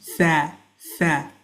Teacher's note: So this letter, when you want to pronounce it properly, tha, your tongue needs to come outside of your mouth and it has to touch the bottom of your upper teeth. The tongue comes in contact and touches the bottom of your upper teeth, and you'll feel a wind coming out when you say it.